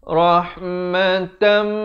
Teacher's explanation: tanwin bertemu mim daripada rahmatan jadi rohmatan tapi jangan lupa dengung dua harakat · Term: Idgham Bighunnah